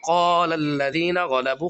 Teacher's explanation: قاف کو ہم موٹا کریں گے، غین کو بھی موٹا کریں گے